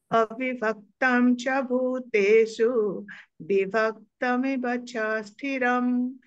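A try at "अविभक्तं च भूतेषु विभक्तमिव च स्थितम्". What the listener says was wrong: स्थितम स्थिरम नहीं स्थितम।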